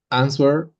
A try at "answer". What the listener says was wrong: No, it's not answer, it's answer. Answer, yes, without a W.